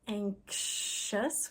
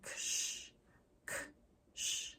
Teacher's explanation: the X is spelling ksh, k, sh put together. So that's two sounds, the k and the sh.